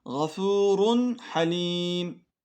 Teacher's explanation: burada Nunu ve tenvinin sonraki Nur sesini açık bir şekilde okuduk ihfa yapmadık ve o Nunu kendisinden sonra gelen harfe katmadık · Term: İzhar